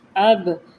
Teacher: با کے اوپر جزم، قلقلہ والا حرف نمایاں پڑھا جائے گا